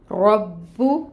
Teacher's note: فعال، رو پر ہوگا کیونکہ اس کے اوپر زبر کی حرکت ہے، 1 کاؤنٹ حرکت ادا ہوگی۔ رو کو پر پڑھیں گے، مفخم کریں گے، با پہ تشدید ہے، ٹائم ٹیکنگ ہوگا، پیش کی حرکت کو 1 کاؤنٹ پڑھیں گے۔